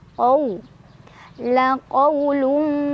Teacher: Karena ada waw sukun, sebelumnya ada fathah di qaf. Cara bacanya dilunakan atau dilembutkan. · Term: huruf lin